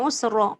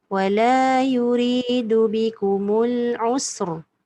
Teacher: Dia tak, bila dia letak usra, dia jadi macam baris atas. Sekarang ni ra tu mati tapi tebal.